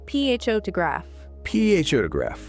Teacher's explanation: In English, we put the strong beat, the power, on the very first part of the word.